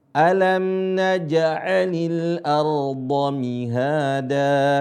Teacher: Di sini perhatikan huruf jim. Jim termasuk huruf yang qalqalah. Huruf yang suaranya memantul. Ya. Karena dia mendapatkan tekanan huruf syiddah, ya.